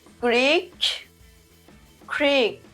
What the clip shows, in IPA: kriːk